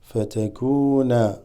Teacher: The waw here makes the kaf a little longer.